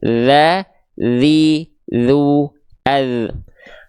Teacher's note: huruf dzal cukup sentuhkan ujung lidah kita ke ujung gigi seri atas kita tipis-tipis